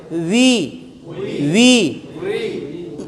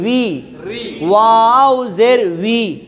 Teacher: এই ওয়ায়ের উচ্চারণ হচ্ছে দুই ঠোঁটের মাঝখানের ফাঁকা থেকে, দুই ঠোঁটের মাঝখানের হাওয়ার উপরে উই, উই। শুরুতে কোনো ইয়া ইয়া বা ও যুক্ত হবে না, সরাসরি উই, ওয়াউজের উই। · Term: ওয়াও জের উই